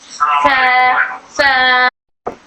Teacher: इसके अंदर सिफते हम्स है। तो इसमें हवा बाहर निकलती है। एयर फ्लो होता है। और ये सॉफ्ट पढ़ा जाने वाला हर्फ है।